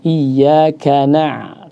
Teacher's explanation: Kemudian juga dari segi itmamul harakat ya, i-nya harus jelas, iya bukan ya, tapi iya. Kemudian dari segi fathahnya juga jelas, iya bukan ye ya.